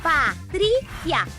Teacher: A mais forte é a penúltima. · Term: sílaba tônica